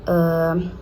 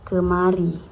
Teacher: I terbuka atau pendek. Diucapkan lebih pendek dan terbuka.